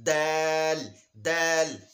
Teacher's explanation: د تا او د دال یو مخرج دی. د ژبې سر د مخامخ غاښونو شاته جړلو سره چې کلک ولګي هغې نه دال ادا کېږي